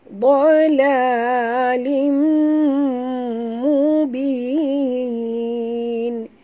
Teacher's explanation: Buat tebal, jangan baca dalala tapi baca do. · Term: Huruf dad tebal